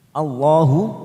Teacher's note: lam jalalah kita baca tafkim karena didahului fathah